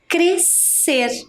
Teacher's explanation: temos duas consoantes que se uniram e formaram um único som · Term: dígrafo